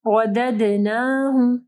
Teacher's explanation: ودد، را کے اوپر زبر ہے، را موٹی پڑی جائے گی. دال کے اوپر جو ہے دیکھیں سکون ہے، ٹھیک ہے، تو دال کے اوپر ہم لوگ کلکلہ کریں گے. رددناہ، رددنہ نہیں پڑھنا، ٹھیک ہے، نون کے ساتھ کھڑی زبر ہے.